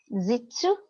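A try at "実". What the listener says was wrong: Yeah, harden the J a little bit, and also make the ts with your teeth rather than with your tongue. So it's not it's not jitsu, it's jitsu, jitsu, jitsu.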